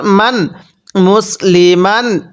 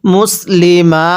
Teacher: দুই জবরের পরে যদি খালি আলিফ থাকে ওয়াকফের সময় এক জবরকে বাদ দিয়ে আরেক জবরকে এক আলিফ টেনে পড়তে হয়।